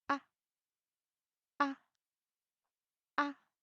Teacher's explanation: A short and light tone. It's kind of similar to the fourth tone, but shorter and softer. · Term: neutral tone